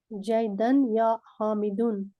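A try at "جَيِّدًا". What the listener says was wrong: جیدن نہیں ہے، جیدن، تشدید سے فرق پڑتا ہے نا.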